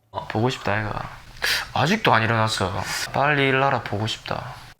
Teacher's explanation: His intonation goes up and down in the middle of his sentences, noticeably more than usual, and that makes it easy to tell when he's using dialect.